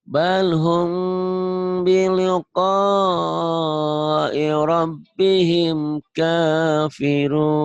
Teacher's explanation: bunyi M-nya tapi bindeng jangan diihfakan seperti ihfa nun mati balhum bunyi M tapi bindeng sedikit